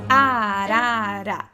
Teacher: Som do A, galera, som do A sempre aberto.